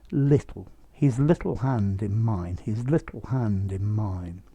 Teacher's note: it's probably the dark l at the end of little that you missed